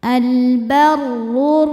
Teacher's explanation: Maka cara bacanya alif lamnya tidak dibaca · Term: idgham syamsi